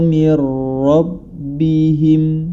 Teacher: Cara membacanya ketika nun sukun atau tanwin bertemu dengan huruf idgham bila gunnah, yakni lam dan ra, ya, dibaca, dimasukkan, nama idgham adalah dimasukkan ke dalam huruf berikutnya tanpa disertai dengan gunnah